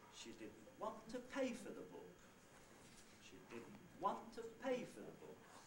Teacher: the first accented syllable that i have is want · Therefore, want in this utterance is the onset. Pay is the nucleus, that's the last accented syllable.